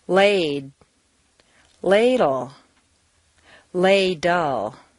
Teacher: for the de you hold the air in the same as for a final D then for the L you release it around the sides of the tongue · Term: consonant clusters, DL combination